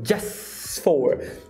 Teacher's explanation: Primeiro, T caiu. Segundo, S juntou com F.